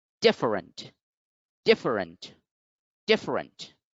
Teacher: the first syllable is once again the one which is stressed so therefore the pronunciation is different different different so d for